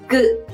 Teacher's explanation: Pour prononcer Sangia, vous refermez vos cordes vocales et prononcez comme pour Kie, mais expirez moins d'air. Vous pouvez sentir avec votre paume presque aucun air exhalé de votre bouche. Imaginez donc que vous dévorez l'air au lieu d'expirer l'air.